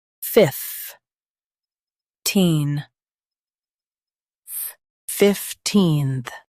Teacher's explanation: Stress fif and soften teenth.